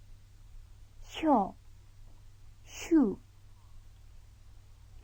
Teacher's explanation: when S is followed by a Y sound, the combination is pronounced like SH in English